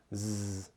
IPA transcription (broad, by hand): z